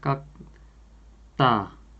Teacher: the initial consonant 디귿 is coming after the final consonant 쌍기역, that is pronounced as 기역. It's intensified as 뜨, right? So it's pronounced as 깍따.